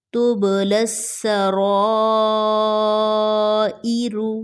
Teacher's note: یہاں پر با blue colour میں ہے تو با پر کلکلا ہوگا